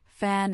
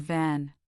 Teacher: For fan, the sound is unvoiced, just air. For van, it is voiced, with your vocal cords vibrating.